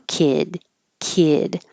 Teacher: the final sound in kid is voiced so the vowel will get a little bit longer